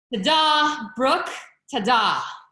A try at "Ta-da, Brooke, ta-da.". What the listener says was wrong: Okay, that was a little bit falling, so let's end strong.